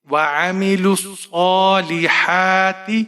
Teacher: صاد کے اوپر کھڑی زبر ہے تو یہاں پر صاد کو ایک الف کے برابر کھینچ کر پڑھیں گے